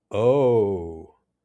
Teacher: Oh, with falling intonation shows understanding or maybe disappointment.